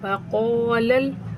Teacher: व क़ालल, क़ाफ़ पुरहुरूफ़ है, इसको मोटा करके और लंबा करके पढ़ेंगे, और वाव और लाम को बग़ैर खींचे, लाम को लाम के साथ मिलाकर